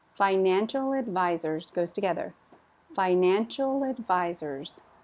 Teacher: notice they're together because advisors starts with a vowel